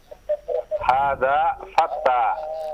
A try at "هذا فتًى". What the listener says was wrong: Fatan dengan tanwin, fatan.